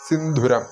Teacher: സിന്ധൂരമല്ല സിന്ധുരമാണ് അവിടെ മഹാപ്രാണനാണ് ധ ശ്രദ്ധിക്കണം